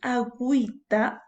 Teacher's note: cuando dices agüita, la U sí se está pronunciando